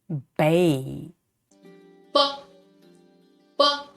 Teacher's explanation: air and then open them and let the air out and notice this sound is not aspirated